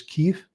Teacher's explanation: The V is almost pronounced like an F. I-E diphthong is E, just like we say chief, thief, relieve, belief.